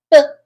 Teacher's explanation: So when that sound comes out, like B, it's going to be blocked. That sound was blocked by my lips. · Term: consonant sound